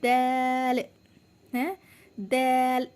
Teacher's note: फिर है हमारा दाल, है दाल, दाल के आप साउंड सुनिए, ये भी नर्म है, कोई सख्त नहीं है, ये भी दाल भी नर्म अदा की जाएगी। दाल का मखारिज ज़बान की नोक